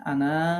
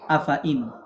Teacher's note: পড়তে হবে আনা, অর্থাৎ টানা যাবে না